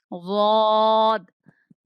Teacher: زبان کی کروٹ اور اوپر کی 5 داڑیں ضاد کا مخرج ہے